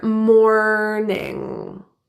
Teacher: The R in morning is a rhotic R with the tongue bunching back, and the final ing sound is pronounced with the back of the tongue, that nasal There's no hard G in INGs at the ends of words.